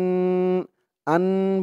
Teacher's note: আন বলে গুন্নাহ করতে হবে, ওয়াজিব গুন্নাহ। কারণ হরকতের পরে নুনের উপরে তাসদিদ আসছে।